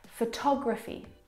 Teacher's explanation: the second syllable is the stressed syllable in this word photography. O tog. Photography.